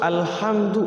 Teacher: syafawi jadi izhar syafawi itu maksudnya syafawi itu kan bibir ya mim itu huruf dari bibir dari dua bibir ini dua bibir ini mim ini ketika ketika bertemu dengan huru bertemu